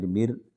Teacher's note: یہ میم را زیر مر رائے ساکنہ سے پہلے زیر ہے مگر اس کو پر پڑھنا ہے